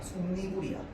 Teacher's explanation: 앞말 끝이 자음으로 끝나고요. 뒷말이 이로 시작하기 때문에 니가 되는 거야. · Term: 니은이 첨가